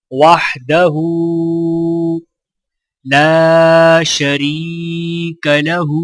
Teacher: وحدہ لا شریک لہ، لام کو الف کے ساتھ ملاتے ہوئے ایک الف کے برابر کھینچ کر پڑھیں گے، را کو یا کے ساتھ ملاتے ہوئے ایک الف کے برابر کھینچیں گے